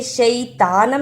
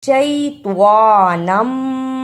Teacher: توا کی جگہ پر تا کی آواز نہیں آنی چاہیے، توا کو موٹا پڑھنا ہے